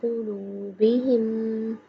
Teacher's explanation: قاف موٹا پڑھیں گے کیونکہ یہ دو نقطوں والی قاف ہے۔